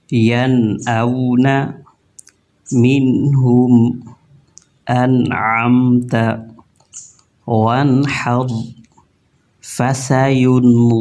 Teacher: गुन्ना ज़रूर किया है, लेकिन इसको टर्म में इख्फ़ा बोलते हैं, यानी छुपा हुआ गुन्ना।